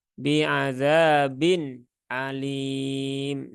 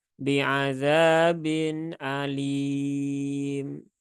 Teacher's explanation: begitu ya karena Nun di sini e ada nun sukun yaah nun sukun itu nunnya itu sifatnya bukan syiddah tetapi sifatnya adalah tawasud